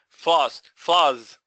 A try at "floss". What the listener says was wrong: No, I can't, I'm not hearing S, I'm hearing a Z. No, that's a Z.